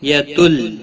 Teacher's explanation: تنوین کے بعد حروف یرملون کا لام آیا ہے ادغام، بلا گنہ ہوگا، گنہ نہیں کریں گے